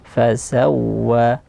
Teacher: di waw bertasydid, didorong suaranya, yaitu nabar.